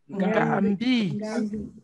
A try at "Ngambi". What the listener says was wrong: Le ton, Nga. Le ton. Ngambi. Quelqu'un dit Mbi.